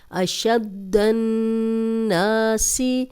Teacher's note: دال کو 2 بار پڑھیں گے، اس پہ شد ہے، نون پہ شد ہے تو غنہ بھی کریں گے اور 2 بار پڑھیں گے، اور نا الف مد ہے، 2 حرکات لمبا بھی کریں گے.